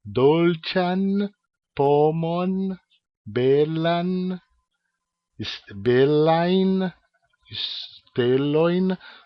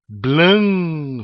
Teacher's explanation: o n Esperanto ele nunca é pronunciado nasalizado